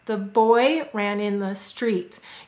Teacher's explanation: you can feel your mouth open larger for boy ran street because you're saying the vowel in these words more clearly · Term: content words